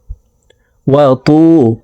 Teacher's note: ওয়াতু, তকে মোটা করে উচ্চারণ করব। ত ওয়াও পেশ তু, একালিপ টানতে হবে, কারণ পেশের বাম পাশে জজমালা ওয়াও মদার হরফ, ডান দিকের হরকতকে একালিপ টানিয়া পড়িতে হয়।